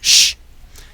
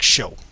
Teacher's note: bunch up your tongue pulling it back a bit from the s and that's where you get the SH sound